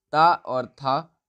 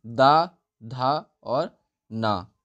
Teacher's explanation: ता और था अघोष व्यंजन हो जाएंगे और सघोष हमारे हो जाएंगे दा, धा और ना।